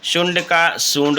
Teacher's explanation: तालव्य श प्रायः दंत स के रूप में मिलता है